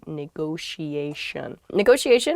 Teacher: there are two t's in this but neither t is a hard t they're both very soft that sound because they're followed by the i and another vowel